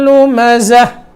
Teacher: گول تا کے اوپر جب وقف کریں گے تو وقف کی صورت میں اس تا کو ہا پڑھیں گے، اس کو تا نہیں پڑھنا. لیکن جب اس کو آگے ملائیں گے تو ملانے کی صورت میں یہ تا ہی پڑھی جائے گی، پھر ہا نہیں پڑھی جائے گی.